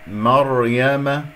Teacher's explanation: يقول مريم مريم، هذا خطأ، مريم ولا أقول مريم، أكور الشفتين، الراء ساكنة قبلها مفتوح تفخيم